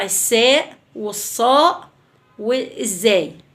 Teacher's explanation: الأصوات برضو اللي بتطلع من طرف اللسان في ظهر الأسنان السفلية